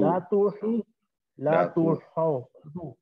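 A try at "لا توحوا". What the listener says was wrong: ہاو نہیں ہا پر پیش لا توہو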